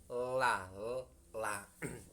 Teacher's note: Kemudian lam, la, tempat keluarnya ada tepi kanan kirinya lidah bagian depan